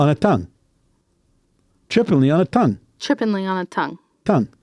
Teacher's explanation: So the T on tongue is what we call dentalize. Okay. We go t. So your teeth come down on your tongue, actually.